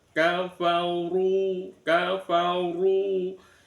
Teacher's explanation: Lam yakunilladzina kafaru sama ada ro di domah runya dibaca tafkhim ya. Rnya rnya dibaca tafkhim tebal.